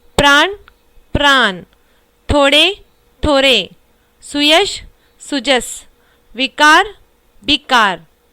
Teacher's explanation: अवधि में ण, ड, य, व के स्थान पर क्रमश न, र, ज, ब ध्वनियां मिलती हैं, जैसे प्राण, प्राण, थोड़े, थोरे, सुयश, सुजस, विकार, विकार।